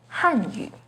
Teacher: The pinyin and tone for Hanyu is with the fourth falling tone on Han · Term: second rising tone